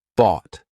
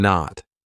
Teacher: t lots of times it'll be that held T So bought my tongue is still up there but I just didn't release it